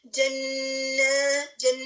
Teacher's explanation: نون مشدد ہے, گنہ کی آواز کو ناک میں ایٹ لیسٹ 2 سیکنڈ ٹھہرانا ہے